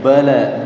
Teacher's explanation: ba-nya enggak boleh ada aliran nafas